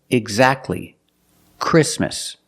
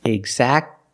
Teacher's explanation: The T is silent when it's between consonants.